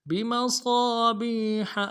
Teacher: با کو یا کے ساتھ ملانا ہے، یا مدہ 1 الف دال میں کھینچیں گے. ہا کو نیم سے ادا کریں گے، گہرائی سے ادا کریں گے ہا کو، یہ گہرائی والا ہا ہے